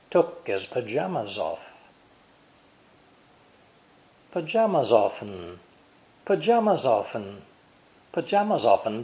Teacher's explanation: um and as we saw before his has no H sound by dropping the consonants D H and th these lightly pronounced words can be linked easily with other words around them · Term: linking of unstressed words